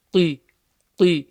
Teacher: So the qaf, clear, full mouth letter with a kasra.